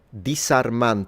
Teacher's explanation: he definitely pronounces the S in intervocalic position. So when the S is in between two vowels, he's pronouncing it as a um it's a fricative still, but it's it's the S variety.